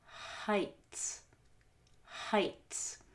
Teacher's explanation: we don't start from the short o we start from the short u which is a mid central